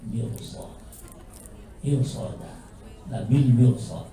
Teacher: huruf ra-nya itu harus dibaca dengan tebal